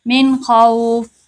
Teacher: جیسے من خوف، من خوف، اب یہاں پہ بھی من نہیں کریں گے، آواز کو ناک میں نہیں لے کر جائیں گے، غنہ نہیں کریں گے۔ اخفا کا مطلب ہوتا ہے، غنہ اخفا کا مطلب ہوتا ہے آواز کو ناک میں لے کر جانا، آواز کو ناک میں نہیں لے کر جائیں گے، آواز کو ظاہر کر کے پڑھیں گے، من خوف۔ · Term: اظہار